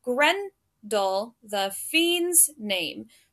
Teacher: so we have Gren and fiend those are the stressed syllables